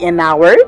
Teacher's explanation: We say an hour because H is unsounded. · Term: unsounded H